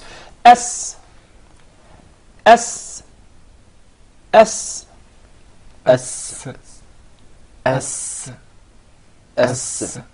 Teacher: Did you notice the whistle while pronouncing the letter Sin?